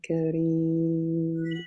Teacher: we can make it longer because it's the last vowel at the end of the ayah